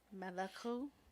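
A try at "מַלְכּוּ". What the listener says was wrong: It's Malchu. Malchu, because remember, if it's not on the first one, then it's silent. That shava. Because it is the first shava in the word, but it's not on the first letter, so it has no vowel sound. It's just a syllable break.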